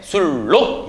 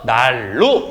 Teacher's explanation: 유음이 아닌 자음인 니은이 유음, 리을을 만나서 리을로 변하는 현상, 유음인 리을로 변하는 현상이라고 하는 걸 다시 한번 머릿속에 개념을 이해하시길 바라겠습니다. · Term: 유음화